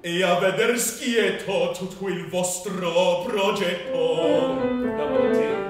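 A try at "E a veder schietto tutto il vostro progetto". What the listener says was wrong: Double T, schietto e tutto.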